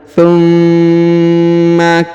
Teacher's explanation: huruf Ma ditahan dan ditekan karena terdapat tanda tasdid